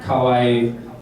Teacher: the ka will sometimes go into the schwa-i and become somewhere between an A and an O